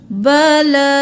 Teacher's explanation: قالو بلا کھڑی زبر ہے، ایک الف کے برابر کھینچیں، بلا نہیں کرنا، بلا۔